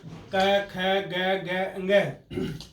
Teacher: कंठ से बोल रहे हैं इसलिए इनको कंठ वर्ण कहते हैं